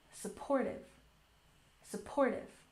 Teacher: Supportive has stress on the second syllable.